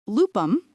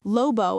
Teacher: those final M sounds in the accusative or at the ends of words, were trimmed in polysyllabic words, leaving only N in monosyllables. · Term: loss of nasals